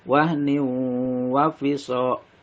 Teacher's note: suara N atau suara tanwin dimasukkan kepada huruf wawu dengan mendengung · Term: idgham biguna